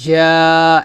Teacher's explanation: জিম আলিফ জবর জা, এক লিফ টান হবে, যাটা জিব্বার মধ্যখান উপর তালুতে লাগিয়ে বলবেন